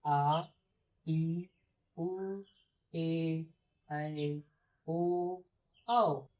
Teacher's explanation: दीर्घ स्वर का उच्चारण करते समय हमें 2 मात्रा का समय लगता है, या आप ऐसे कह सकते हैं कि हमें दीर्घ स्वरों का उच्चारण करते समय एक मात्रिक या एक ह्रस्व से अधिक समय लगता है।